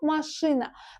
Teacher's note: İkinci heca, ş hecasına düşür də, düzdür? Maşina.